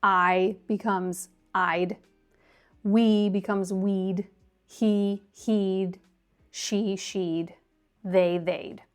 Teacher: So the contractions with would are pretty simple because it's basically just adding a d sound to the end of the pronoun, and the pronoun keeps its same pronunciation that it would have without the contraction at the end.